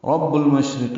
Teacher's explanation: رب المشرق، را پر پڑھیں گے، با سے ملائیں گے، با کو المشرق لام سے ملائیں گے، اظہار قمری کا، شین ساکن پہ ہمس ہے، تفشی ہے، منہ میں آواز پھیلتی ہے، سانس جاری رہتی ہے، را باریک ہے، قاف پر ہے، جلدی اور معروف طریقے سے را اور قاف کی زیر کو پڑھیں گے۔